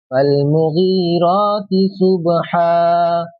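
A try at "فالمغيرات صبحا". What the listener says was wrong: صبحن ہے نا۔ یہ جو صبحن لکھا ہے یہاں پر رہتے نا،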